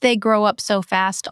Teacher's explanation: So, the up is almost swallowed. >> Yes, very light.